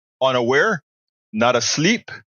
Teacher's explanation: of two short syllables followed by one long syllable or of two unstressed syllables followed by one stress syllable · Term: anapest